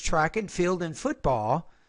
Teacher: Notice here I said track and field and football because we have two different ideas here. So I had a little bit of rising tone here, then falling tone when I mentioned the second sport.